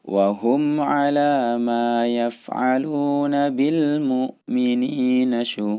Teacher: Sekali lagi, karena hamzah bukan termasuk bagian huruf yang memiliki qalqalah, yang memiliki pantulan suara. Jadi harus ditahan, jangan sampai dia menimbulkan pantulan suara ketika mengucapkan hamzah yang sukun.